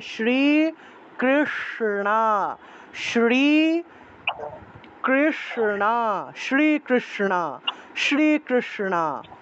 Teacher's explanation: মূর্ধন্যস্বর উচ্চারণ হলো স, জিহ্বা উল্টে স উচ্চারণ করতে হবে, জিহ্বা উল্টিয়ে। স্বর উচ্চারণটা জিহ্বা উল্টিয়ে, তাহলে শ্রী কৃষ্ণা, শ্রী কৃষ্ণা, শ্রীকৃষ্ণা, শ্রীকৃষ্ণা।